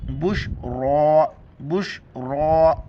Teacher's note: را کے اوپر کڑا زبر ہے، ایک الف کی مقدار اوپر کھینچنا ہے اور را کو موٹا کر کے پڑھنا ہے